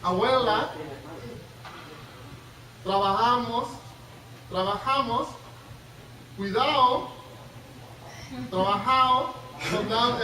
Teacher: el debilitamiento de estas, lo que llamamos oclusivas sonoras, ¿no? D, G, abuela, se hace más débil.